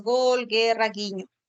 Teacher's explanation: el fonema oclusivo velar sonoro. Se va a representar por la letra G o por el dígrafo GU.